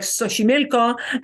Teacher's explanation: you may hear a sh in Mexico for things like Xochimilco, the native language places, the indigenous language places that have an X. That's the only time you're going to hear a sh sound in Spanish.